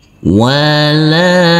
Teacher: huruf lam yang berfathah a ini bertemu dengan huruf alif yang tidak berharokat, maka huruf lam dibaca panjang dengan panjang 2 harokat